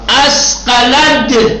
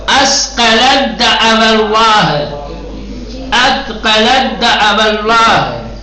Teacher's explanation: تا کو حذف کر دیں گے اور دال کو تشدید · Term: ادغام